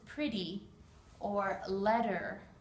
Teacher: Now, we don't say these T's. In America, when you have a double T in a word, it actually makes a D sound.